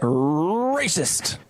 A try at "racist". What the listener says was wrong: You got to roll the R a little more.